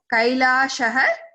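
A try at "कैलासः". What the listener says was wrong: Kailasah, not Shah.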